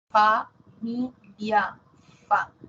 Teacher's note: labio dental labio inferior dientes superiores